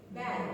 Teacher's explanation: it's very back, Blade touching your back of your alveolar.